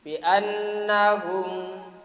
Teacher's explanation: annah dibaca guna itu mendengung. Annahum itulah yang ada dengungannya itu, berenggang istilah orang Jawa itu.